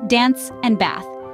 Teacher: a short a sound so we get Dan and Beth but in Indian English it's a longer a